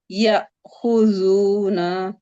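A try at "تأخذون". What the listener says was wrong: नहीं ता है, ता खुजूना, ता खुजूना,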